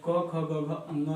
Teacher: क ख ग घ अंग, ये जो है कंठ से निकलेगा